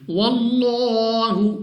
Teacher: next ہمارے پاس ہے لام آف اللہ، یعنی اللہ کا لام، اور اللہ کے لام سے پہلے حرف پر زبر ہے، تو یہ لام آف اللہ موٹا پڑھیں گے